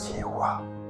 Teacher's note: il n'y a pas de P, il n'y a pas de M, il n'y a pas de labial, il n'y a pas de guttural, c'est juste ce souffle-là · ces 4 consonnes qui sont comme un souffle